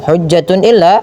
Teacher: bacaan izhar yaitu dibaca dengan jelas suara tanwinnya